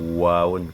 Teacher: quand tu dis waoun, les 2 lèvres sont arrondies